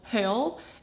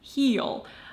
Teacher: are two different E sounds, lax and tense. For example, hill and heel.